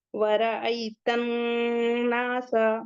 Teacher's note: وَرَأَيْتَ النَّاسَ، نون مشدد ہے اور یہاں پہ حروف شمسی کا قاعدہ ہوگا، الف لام دونوں نہیں پڑھیں گے۔ نون کے بعد کا الف مدہ ہے اور نون مشدد پہ غنہ بھی ہوگا